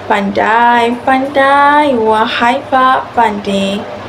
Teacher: Perkataan pandai-pandai memerlukan sedikit pemanjangan pada vokal yang sama untuk mengekalkan ritma. · Bagi pemanjangan vokal, vokal pada perkataan yang hendak ditekankan dipanjangkan sedikit untuk mencapai kesesuaian rentak. Contohnya, pandai, pandai, wahai Pak Pandai.